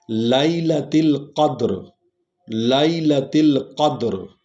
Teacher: لیلہ لام اور یہ کو لین پڑھیں گے، نرم انداز میں پڑھیں گے، کیونکہ یا اور وا سے پہلے اگر زبر والا حرف آ جائے تو وہ کیا ہو جاتے ہیں، نرم پڑھا جاتا ہے۔